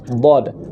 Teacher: Umumnya adalah dengan tepi lisan bagian kiri tempel di geraham atas bagian kiri.